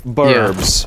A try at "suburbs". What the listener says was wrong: You're putting emphasis. You were putting emphasis on the on the burbs, and the emphasis should be on the sub. It's not. But it's not. Suburbs and suburbs.